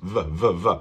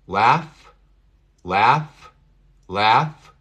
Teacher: Aquí estamos vibrando. Aquí solamente estamos soplando con la F.